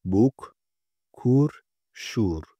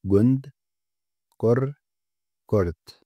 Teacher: şapkalı U, Türkçedeki U gibi ama daha uzun okunurken Ü sesi daha kısa telaffuz edilir